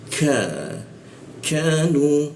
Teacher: Eng ka itu di ee siku tenggorokan lidahnya kita turunkan sehingga dibacanya itu ada hembusan dia